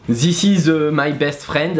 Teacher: the th sound well that's pretty easy you just forget about this sound and replace it with the Z